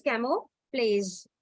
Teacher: J will not be sounded, but it will be Z